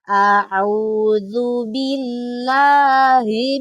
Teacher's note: Yang dipakai di sini adalah ha tipis atau makharijul hurufnya aqsal halq. Jadi makharijul hurufnya ada di pangkal tenggorokan.